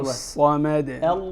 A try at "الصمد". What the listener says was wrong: الله الصمد. الصاء، لاحظ الصاء وليس الساء. وليس الساء، اختلف المعنى. الصاء.